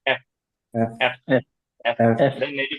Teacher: উপরে দাত নিচে ঠোটের সাথে লাগবে